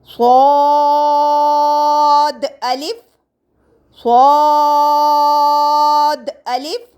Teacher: اس کو سیٹی سے نہیں، اس کو پر یعنی موٹا کر کے پڑھا جائے گا. اور اس کا قاعدہ یہ تھا، زبان کی نوک جب ثنایا سفلی کے کنارے سے ٹکرانے کے ساتھ ساتھ ثنایا علیا سے بھی لگے تو یہ حروف ادا ہوتے ہیں.